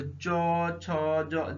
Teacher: जब भी बोलेंगे तो तालु में आपका जीवा टच होगा, तालु में